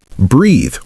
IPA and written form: briːð (Breathe)